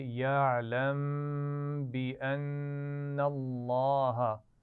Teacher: یعلم کے میم پر غنہ ہوگا یا نہیں؟ ہوگا کیونکہ اس کے بعد حرف با آ گیا ہے، ہم نے سیکھا ہوا ہے پہلے، تو اس کو پڑھیں گے یعلم غنہ کے ساتھ بِأَنَّ اللَّهَ.